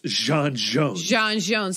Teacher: you get like a j sound but with a little bit of a fricative z in there